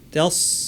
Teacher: সাদ ভারী, জিহ্বার শীর্ষ নিচের পাটির দাঁতের গোড়া লাগিয়ে আওয়াজটাকে উপরে ঠালতে হবে। তাস ওয়া তাসরিফির, এখানে রয়ের উপর তাসদিদের সাথে জের থাকায় র পুরোটাই পাতলা হবে।